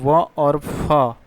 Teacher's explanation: तो दंतोष् व्यंजन हम अगर बात करें तो यह होते हैं हमारे व और फ यह हमारे होते हैं व और फ तो दंतोष् व्यंजन होते हैं। यानी इनके उच्चारण में दांत और ओष्ठ का दोनों का प्रयोग होता है।